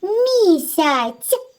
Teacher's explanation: Так, звук ц. Він м'який, приголосний. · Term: м'який звук ц